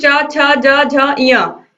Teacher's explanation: च वर्ग च, छ, ज, झ, य, ये तालु को स्पर्श करते हैं।